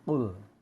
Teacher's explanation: pangkal lidah menyentuh langit paling belakang dekat tenggorokan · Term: huruf Qaf